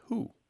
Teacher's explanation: sometimes that W sound collapses into the vowel · where did that W go we don't say that W anymore right so that's why the W sound disappeared even though the